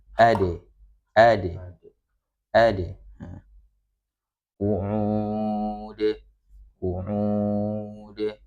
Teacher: huruf dal memiliki sifat qalqalah, memiliki sifat pantulan terlihat ketika huruf dal tersebut su sukun atau waqaf ya.